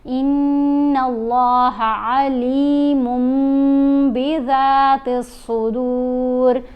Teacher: جب نون ساکن یا نون تنوین کے بعد حرف با آ جائے تو ہم نے نون کی آواز کو میم کی آواز میں بدل کر پڑھنا ہے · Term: قلب